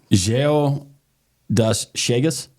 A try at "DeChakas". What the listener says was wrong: You know, the Das Shegas is close, but the Geo is not close.